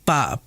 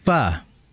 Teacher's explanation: Pa, bukan pa, melainkan fa. Bukan menempelkan bibir bawah dengan bibir atas, melainkan bibir bawah yang bagian dalam ditempelkan oleh gigi ujung seri atas. Ya, sehingga dibaca fa. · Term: huruf fa